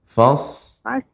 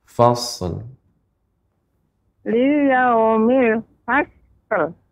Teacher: Ya, ini juga agak melambat dia karena shad bukan huruf qalqalah sehingga tidak bisa langsung kita pantulkan